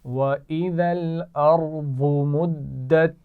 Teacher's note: ارض را کے بعد واد ہے مخرج کا خیال رکھتے ہوئے پڑھیں گے اور دونوں آوازیں ارض موٹی ادا کی جائیں گی